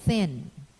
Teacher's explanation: narrowing the passage of the breath stream raise the soft palate release the breath between the tongue and the teeth with friction making a voiceless continuant the obstruction is incomplete and the release is gradual in the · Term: voiceless fricative